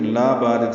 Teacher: سے پڑھیں گے، لا الف مدہ ہے، 2 حرکات لمبا ہے، بارد با الف مدہ ہے، 2 حرکات لمبا ہے